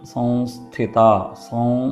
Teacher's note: സം എന്ന് കഴിഞ്ഞ് അടുത്ത അക്ഷരം സ എന്ന് വരുന്നതുകൊണ്ട് അവിടെ ഒരു അനുനാസിക ശബ്ദമാണ് പുറപ്പെടേണ്ടത്